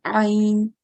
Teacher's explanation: The correct way to pronounce it is to pronounce it from the middle of the throat, and it is one of the typical sounds of the Arabic language. Okay, so it comes from middle of the throat and it has a very prominent sound